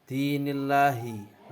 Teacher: Dinillahi lam tarkik karena ada lafal Allah yang sebelumnya ada harakat kasroh. Cara membacanya ditipiskan.